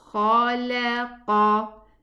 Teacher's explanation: This is an elevated kha and an elevated qaf, but the lam is not.